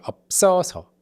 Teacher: the pitch is like kind of higher in the second syllable